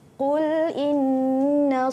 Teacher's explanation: Okey, kita perhatikan qul ya, makhrajnya huruf qaf ya, makhrajnya di pangkal lidah qa ya, jangan kul jadi kaf. Qul in, nun ada tanda sabdu iaitu syaddah dengung ya, wajibul gunnah